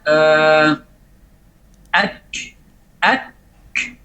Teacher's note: Contoh, pada saat kita katakan kaf sakinah, misalnya ak, ak, setelah kita berikan syiddahnya, setelah syiddah maka langsung otomatis keluar hamasnya.